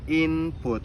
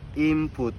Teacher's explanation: For example, in the word input, which should be pronounced input, native speakers often say input. The sound N change to M because the following sound P is produced at the same place of articulation, the lips. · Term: Regressive assimilation